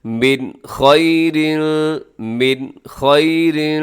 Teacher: لِأَنفُسِكُم مِّن خَيْرٍ، اب من میں نون ساکن ہے اور نون ساکن کے بعد خا، یہ حروف جو ہے حلقی میں شامل ہے، آپ یہاں اظہار کریں گے، غنہ نہیں کریں گے